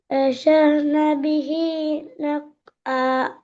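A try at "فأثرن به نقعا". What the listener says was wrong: முதலாவது பேட சவுண்ட் வரணும். ஃபஅசர். ஃபஅசர்.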